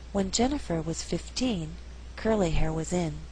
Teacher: 15 is at the end of a phrase so the second syllable is stressed also here in is not a preposition it's not a function